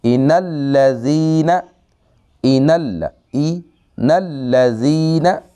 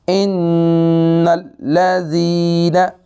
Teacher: اس لفظ کے اندر 2 شد ہیں، دونوں کو پڑھنا ہے، اور جب نون پہ شد آئے گی اور میم پر شد آئے گی، نون مشدد ہوگا میم مشدد ہوگا، تو ان دونوں میں غنہ ہوگا 1 الف کی مقدار